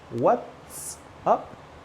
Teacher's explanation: what's up has the /ts/ Sound. The T and the S sound.